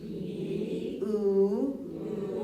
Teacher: You have E here and U here. And they're made with high tongue.